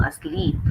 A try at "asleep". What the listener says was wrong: So you are putting the stress on the first syllable for asleep. So it should be asleep, not asleep.